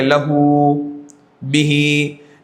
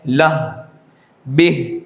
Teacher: جب وقف کریں گے تو اشباع کے ساتھ وقف نہیں ہوگا، کھینچ کر ہم وقف نہیں کریں گے